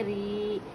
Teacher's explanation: राया ज़ेरी, हुर्फ़े मद्दा खींच को पढ़ेंगे